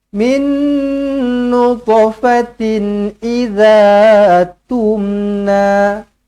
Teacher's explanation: Min jumpa dengan nun sabdu di sini, didengungkan dengan dua harakat. Nun kosong bertemu dengan nun sabdu, idgham ma'al gunnah.